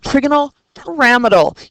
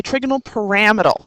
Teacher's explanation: you want to lay on that second syllable